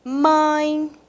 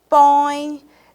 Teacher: letra O alemão a palavra mãe a palavra põe perceberam que tanto na letra A quanto na letra O vai trazer um som mais nasal